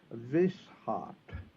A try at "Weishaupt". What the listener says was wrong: A correct pronunciation would be Weishaupt, as if it started with a V. The German W is really always a V.